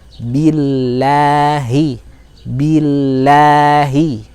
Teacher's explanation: Maka karena sebelum huruf atau lafdzu jalalah ini adalah kasrah, maka bunyi lafdzu jalalahnya, bunyi lam dalam lafdzu jalalah ini adalah tipis